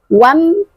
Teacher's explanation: hukum bacaannya izhar syafawi, maka harus dibaca jelas saja, tidak boleh didengungkan. Wam cukup berikan haknya huruf mim.